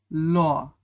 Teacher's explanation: বাতাসটা জীভের দুই পাশ থেকে বের হয়ে যায়। এজন্য যেহেতু পাশ থেকে বের হয়ে যায় তাই সেটা পার্ষিক ব্যঞ্জন ধ্বনি।